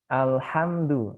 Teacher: Dan lam ini ujung lidah sama makhorijul hurufnya di toroful lisan ya, ujung lidah nempel di langit-langit ya.